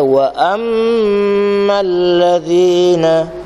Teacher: yang penting kita baca dengung tu 2 harakat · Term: idgham wajib al-gunnah